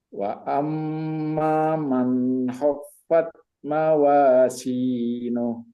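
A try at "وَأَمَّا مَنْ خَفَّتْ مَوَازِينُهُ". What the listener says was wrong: Taknya kasih angin. Khaffat. Fat. Mam. Jangan mamman. Wa amma man.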